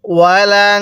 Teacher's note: নুন সাকিনটা নাকের বাঁশি দ্বারা গুনাহ করব